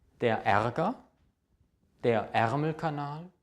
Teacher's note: Leider wird Ästhetik wie ein offenes E ausgesprochen, aber dieser Buchstabe ist normalerweise geschlossen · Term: geschlossenes E